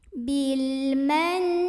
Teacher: langsung Kun ini dibunyikan dengan jelas bilmen lihat ada ghunnah musyaddadah karena ada Nun yang bertasydid maka cara membacanya didengungkan dulu